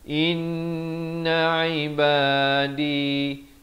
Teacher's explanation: dua harakat wajibul ghunnah